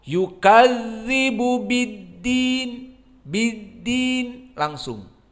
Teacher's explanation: tasdid dal tidak memberikan rakhawah tetapi syiddah, cepat. Yukadzibu biddin, biddin langsung, tidak biddin seperti dza.